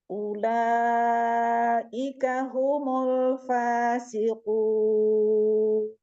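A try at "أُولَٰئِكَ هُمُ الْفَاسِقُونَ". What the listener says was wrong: Nah, dhammahnya ulaika humu, bukan homo. Jangan ngembang di dalam humu. Huruf U aja Bu, sempurna ucapkan U. Bunyinya seperti U kita biasa. U. Jangan bulat, jangan bulat.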